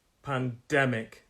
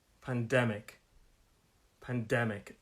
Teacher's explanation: it's a three syllable word pandemic stress is on the second syllable